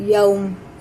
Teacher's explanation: یوم یہ بھی جب بھی یا ساکن واو ساکن سے پہلے زبر یا ساکن سے پہلے زبر ہوتا ہے تو اسے جلدی پڑھتے ہیں بنا کھینچے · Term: حرف لین